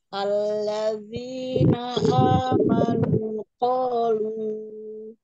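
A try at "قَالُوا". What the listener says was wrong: Nah, lu-nya dikurangi sedikit. Qalu.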